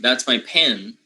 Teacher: If a Spanish speaker learns English, usually we have a very hard time trying to make the initial p, right, aspirated. So we say something like, oh, that's my pen, right? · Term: aspirated P